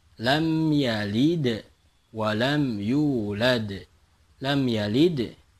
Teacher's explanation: lam yalid itu adalah qolqolah sugro karena berada di tengah